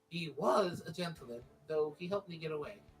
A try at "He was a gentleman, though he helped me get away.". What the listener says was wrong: You said that completely wrong. Yeah, the way you said it made it imply that him helping her get away was contrary to him being a gentleman.